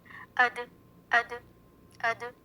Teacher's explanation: اوپر والے دو دانتوں کی جڑ یعنی مسوڑوں کے اوپر کی نرم جگہ. It is emitted from the top part of the tip of the tongue and the soft area above the gum of the two top incisors where the roots are. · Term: دال